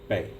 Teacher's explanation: And bei is just, it's neutral. There's no strong inflection on it. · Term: neutral tone